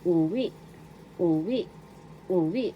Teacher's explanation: Second syllable, we, is the accent.